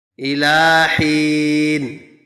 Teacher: حین پر وقف کرنے کی صورت میں نون پر ہم ساکن پڑھیں گے